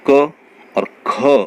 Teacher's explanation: ख में हमारे मुंह से ज़्यादा वायु निकलती है, तो ये महाप्राण हुआ